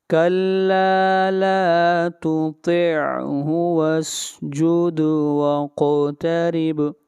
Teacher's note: قاف کے اوپر بھی قلقلہ کریں گے اور با کے اوپر بھی قلقلہ کریں گے